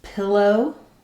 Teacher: In a word like pillow, the O is a little bit shorter. It's still the same sound, but it's unstressed.